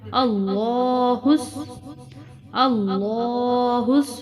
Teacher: لام کو موٹا پڑھیں گے اور کھڑی زبر کی وجہ سے لمبا کریں گے